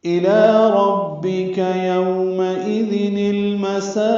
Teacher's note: إِلَىٰ رَبِّكَ يَوْمَئِذٍ الْمَسَاقُ، إِلَىٰ حمزہ جلدی پڑھنا ہے، معروف طریقے سے، لام کو باریک پڑھنا ہے اور دو حرکات لمبا کرنا ہے. ربک میں را پر پڑھیں گے، کاف باریک ہے، جلدی پڑھیں گے.